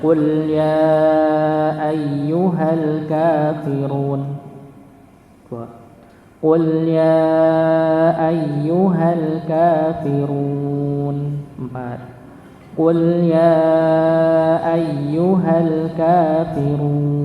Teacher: Ada 3 pilihan, 2, 4 atau 6 harokat panjangnya.